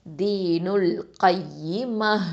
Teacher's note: காஃப் ஃபதா யா ஷத்தா கை, யா கெஸ்ரா இ கை, மீம் ஃபதா ம, த கெஸ்ரா இருக்குது. இப்போ இதை வக்ஃபு பண்ணுறதுனால, ஸ்டாப் பண்ணுறதுனால இந்த த மர்பூத்தால உள்ள கெஸ்ராவை என்ன பண்ணணும், ஹ தொம்மாவாக மாற்றிடணும்